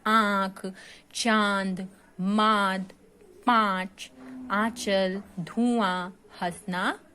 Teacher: इनके उच्चारण में मुख और नाक दोनों का प्रयोग होता है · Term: अनुनासिक